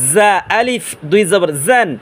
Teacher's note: জিহ্বার আগা সামনে নিচের দাঁতের আগার সাথে লাগাইয়া এবং এভাবে মৌমাছির আওয়াজ উচ্চারণটা করব